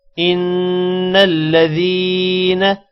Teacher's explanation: نون پر غنہ کریں گے اور یا مدہ کو ایک الف کے برابر لمبا کریں گے، باقی کسی بھی حرف کو لمبا نہیں کریں گے، ان الذین۔